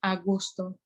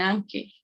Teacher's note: ciertas vocales cuando están juntas, omiten una. Es una reducción del diptongo